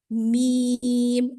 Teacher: ہونٹوں کو بالکل سامنے سیدھا رکھا ہوا ہے اور صرف ہونٹوں کی حرکت کو ادا کرنے سے یہاں پر میم ادا ہو رہا ہے